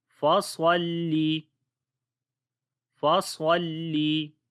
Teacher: صاد کو موٹا پڑھیں گے، حروف استعلاء میں سے ہے